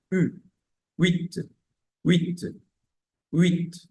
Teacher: Recuerden que la u francesa es más cerrada más cerrada los labios